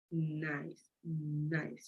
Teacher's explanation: That's why we say it's voiced. Then when I pronounce N, the tongue, my tongue goes up to my alveolar ridge. And that's the reason why we say it's alveolar.